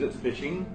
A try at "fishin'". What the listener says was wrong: No, there's no G in fishing.